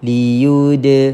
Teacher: lantunan kecil pada huruf Dal seakan-akan kita tambahkan padanya huruf e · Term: Qalqalah